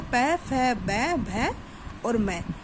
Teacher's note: Next आता है ओष्ठ्य। होठों की मदद से बोले जाने वाले व्यंजन ओष्ठ्य कहलाते हैं।